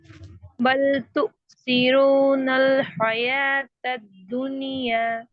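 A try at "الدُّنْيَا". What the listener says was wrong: مجھے ابھی بھی دنیا ابھی بھی کسرہ ایسے آواز آ رہی ہے. اس کی کوشش کریے.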